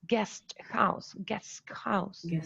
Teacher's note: that way because it's difficult to pronounce because as you see before the voiceless alveolar plosive sound we have a voiceless alveolar fricative okay and later we have that a glottal sound so the